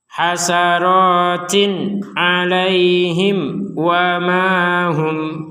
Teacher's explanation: Mim sukun bertemu waw di sini kita baca dengan jelas.